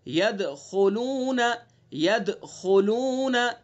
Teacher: ٹھیک ہے، وَرَأَيْتَ النَّاسَ يَدْخُلُونَ، ید دال ساکن ہے تو دال کے اندر قلقلہ کریں گے، ٹھیک ہے. یدخلون، آگے خا ہے، خا کو پر کریں گے